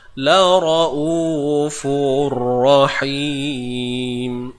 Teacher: Tanwin bertemu ra, idgham bila gunnah. Idgham ni masukkan bunyi fa ni, tanwin fa ni ke dalam ra. · Huruf ra semestinya tebal lah pada atas.